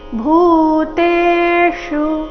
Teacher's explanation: ಚರಣದ ಕೊನೆಗೆ ಬಂದಿರೋ ಶು ರಸ್ವ ಬರಬೇಕು